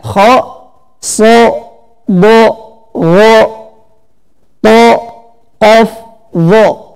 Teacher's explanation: Selanjutnya ada sifat huruf yaitu al-isti'la, yaitu lidah naik ke langit-langit. Ini hurufnya khussa do tingkid, ya.